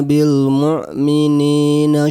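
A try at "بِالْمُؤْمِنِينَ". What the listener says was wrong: Mu'minin ya, di sini hamzah bukan ain. Mu'minin.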